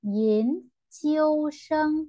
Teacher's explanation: thanh hai cộng thanh một cộng thanh một